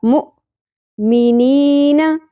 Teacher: حمزہ ساکن جھٹکا کے ساتھ ادا ہوگا